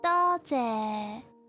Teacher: Okay, remember 多 谢 lower tone. Higher and lower.